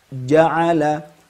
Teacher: sebelum kita mengeluarkan suara jim fathah, ja, itu tidak dijumpai gemuruh apapun. Maka itulah wujud kedua sifat ini ketika jim berharokat fathah, ya.